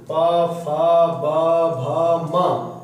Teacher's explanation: प फ ब भ म यानी जो प वर्ग में आते हैं वो ओठ से बोले जाते हैं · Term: ओष्ठ